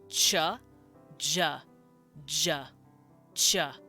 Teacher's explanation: cha is actually a t and an sh sound put together